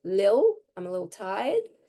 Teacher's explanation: So little softens to little. Or a T can get dropped altogether in the middle of a word.